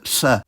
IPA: ɬ